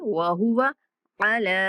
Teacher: وہو، واو کو لمبا نہیں کریں گے، وہو ایسے نہیں پڑھیں گے، وہو علی، لام کے اوپر کھڑا زبر ہے، لام کو لمبا کریں گے